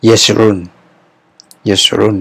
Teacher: Jadi diucapkan cepat, epepet saja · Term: swa bersuara